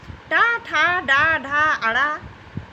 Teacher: इनका उच्चारण स्थान होता है मूर्धा या मूर्धन।